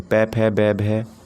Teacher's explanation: हिंदी की बै ध्वनि ओष्ठ्य ध्वनि है, पै वर्ग के वर्ण ओष्ठ्य ध्वनि के अंतर्गत आते हैं